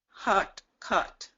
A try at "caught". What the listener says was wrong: Okay, drop that jaw a little bit more. Hot, caught.